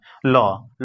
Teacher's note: ल पार्श्विक है जो कि जीभ के बगल से क्या हो जा रहा है वाष्प बाहर हो जा रहा